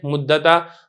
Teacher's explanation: دال اور تا یہ قریب المخرج ہیں، لہذا ہم نے دال کو تا کیا، تا کا تا میں ادغام کر دیا